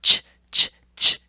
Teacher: We go down to our third category, which are those affricates, and they are a combo. They're a combo of a stop and a fricative.